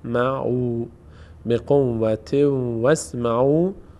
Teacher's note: الف خوانده نمیشه وا می‌چسبه به سین